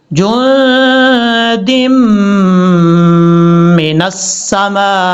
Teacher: جو دم من السماء، میم کے آگے جو الف ہے، الف کے اوپر مد ہے، اس مد کو مد متصل کہا جاتا ہے. اڑائی الف کے برابر آپ نے لمبا کرنا ہے. وما کننا، نون کے اوپر شد ہے، شد کی وجہ سے غنہ کریں گے.